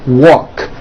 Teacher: The word walk, which has an unvoiced K sound at the end